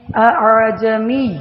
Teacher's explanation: لفظ اعجمی، اعجمی، حمزہ اور حمزہ کو واضح، اور عین کو نرمی کے ساتھ جمیون، دوسرے حمزہ کو نرمی سے پڑھیں، اس کو تسہیل کہتے ہیں